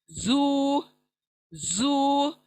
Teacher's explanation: फिर सख्ती वाला ज। दोनों दांत मिलने से और नुकीली जबान आकर लगने से अदा होगा सख्ती के साथ